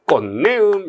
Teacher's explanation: 디귿과 니은이 만나면요, 비음화가 벌어져서 꽃내음 이렇게 발음 나죠